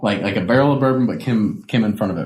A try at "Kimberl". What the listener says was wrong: Well, not barrel, but Kimberl.